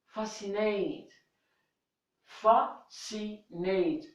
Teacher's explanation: I'm saying f, s, n, t, but I'm not saying the sound C. So C here is not pronounced again.